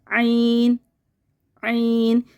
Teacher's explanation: आइन में हमारा हलक बिल्कुल बंद हो जाएगा, जैसे कि आइन, बिल्कुल हक को बंद करके खोलें, आइन, आइन, यानी हलक में जो ये हमारा ये मुंह है, ठीक है, और ये हमारा हलक है, सही है।